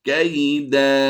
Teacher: دو زبر کی تنوین ہو تو ہم وقف میں الف مدہ سے بدل دیتے ہیں، یعنی اس کو لمبا کر کے پڑھیں گے